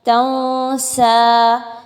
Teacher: اس لیے ہم اس کو اخفا کر کے نون ساکن کی آواز کو ناک میں چھپا کے غنہ کر کے پڑھ رہے ہیں